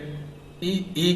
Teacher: ई बोलने पर हमारी जीभ जो है दांत के पीछे जो गड्ढा होता है उसमें जाती है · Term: तालु